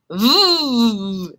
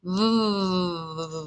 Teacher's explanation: my top teeth are a little bit on my lower lip when i make this sound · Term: voo sound